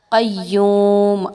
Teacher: قاف حروف مستعلیہ میں سے ہے، اس کو پر پڑھا جائے گا